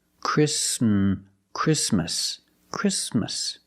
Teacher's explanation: We don't say Christmas. The T is between consonants, so it is silent. Link the sound s with the m.